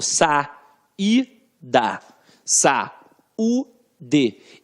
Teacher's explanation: eu falo sa-i-da, sa-u-d. Então, tanto i quanto u ficam isoladas. Hiato é isso, ó, é um espaço, ó, hiato.